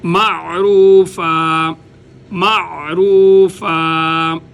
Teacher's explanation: عین کو نرمی کے ساتھ گلے کے درمیان سے کوشش کی جائے، ادا کیا جائے